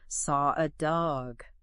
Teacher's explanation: An R sound might be added like in four eggs or saw a dog. Even if there's no R in the spelling. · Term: intrusive R